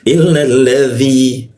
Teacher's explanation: masuk ke dzi, ujung lidah gigit dia